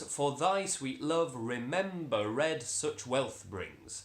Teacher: it also gives us a feminine ending which means that that last word brings is on a soft stress